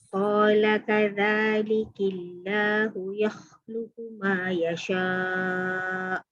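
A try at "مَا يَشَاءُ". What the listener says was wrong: Jangan yasha. Dia kena nipik yasha. Senyum sikit.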